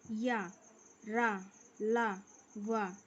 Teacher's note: रा और ला में जीभ आधा स्पर्श करती है और या और वा में एक भी स्पर्श नहीं होता